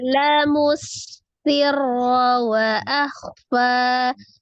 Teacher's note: Sinnya tasdid, ro-nya tasdid, tapi ro-nya pendek.